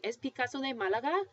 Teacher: so your voice is going to go up that's the rising intonation and you've switched the order and that's how you ask you're